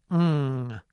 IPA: ŋ